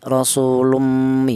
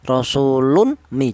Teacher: Cara bacanya tanwin ini langsung menyatu ke huruf mim ini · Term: idgham bi gunnah